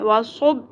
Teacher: قلقلہ کیا ہوتا ہے basically it is a bouncing sound با ساکن کو ہم نے باؤنس کروانا ہے